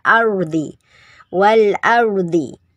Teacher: Nah, alnya terbaca. Kemudian ada ro, ini termasuk mufakhom, dibaca tebal roknya ya